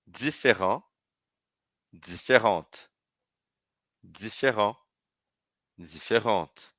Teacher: na pronúncia o E final não é falado e eu pronuncio a consoante que está antes dele